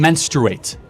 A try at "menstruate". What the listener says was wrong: Menstruate? Okay, because you're saying mensurate, and it's like kind of a little.